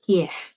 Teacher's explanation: It's produced with the tongue raised toward the hard palate. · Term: palatal